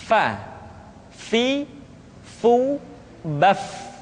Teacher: diucapkan dengan menyentuhkan ujung dua gigi seri kita bagian atas dengan bibir bawah bagian dalam Fa seperti kita mengucapkan huruf F di dalam huruf latin Fa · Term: huruf Fa